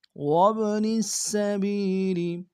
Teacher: والصاحب بالجنب وابن السبیل وابن السبیل، واو کو با کے سامنے لائیں گے، با قلقلہ میں سے قلقلہ کریں گے، نون کو سین کے سامنے لائیں گے، سین کی سیٹی باریک ہوگی، سین کے اوپر تشدید زور دیں گے، با کو یا کے سامنے لائیں گے، یا مد ایک انتظار میں کھینچیں گے۔